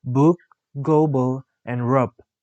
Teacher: The description of b is voiced bilabial stop.